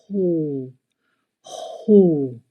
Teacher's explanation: Le son OU se prononce comme OU en français, mais avec une expiration profonde venant du fond de la gorge. Ho, ho. La bouche, quant à elle, forme un cercle comme pour souffler tout doucement sur une bougie ou sur une bouillie chaude, et la gorge reste détendue et ouverte.